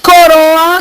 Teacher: o o é uma pronúncia fechada